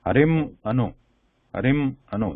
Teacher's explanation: This is a ma sound, not Anusvara sound. So Anusvara cannot be pronounced.